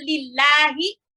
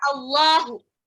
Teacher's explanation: ada yang bacanya dia pakai lafal A, ada yang kayak bacanya itu kayak lafal O. Nah itu, kalau yang tebal dia pakai lafalnya O.